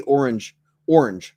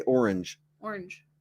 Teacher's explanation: I say it as one syllable and a lot of folks say orange orange with two syllables